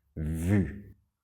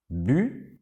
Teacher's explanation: dientes de arriba que tocan el labio de abajo